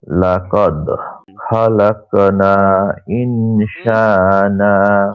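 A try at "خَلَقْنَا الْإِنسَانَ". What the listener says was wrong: খলাক না নয়, খলাক নাল। যাচ্ছে, ইনসানা, সিন পাতলা করে বলেন, ইন, ইনসানা।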